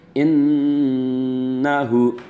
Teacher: pada kata innahu itu hunnah musyaddadah, ketika membacanya ditahan ya. Innahu ditahan 2 ketukan